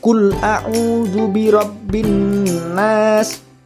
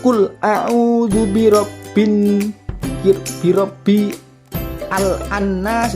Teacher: suara alif lam itu dimasukkan kepada huruf nun yang ditasjid itu atau dihilangkan secara bacaan aja. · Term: idgham syamsiyah